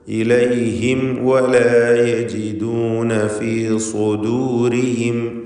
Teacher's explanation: ഇലൈഹിം എന്നതിൽ സാക്കിനത മീം ശേഷം വാവ്. ഇൽഹാർ ഷഫവി സൂക്ഷ്മതയോടെ വേണം, കാരണം ശേഷം വാവായതുകൊണ്ട് മീം അവ്യക്തമായി പോകാൻ കൂടുതൽ സാധ്യതയാണ്. വാവും ചുണ്ടിൽ നിന്ന് ഉച്ചരിക്കുന്ന അക്ഷരമാണ്.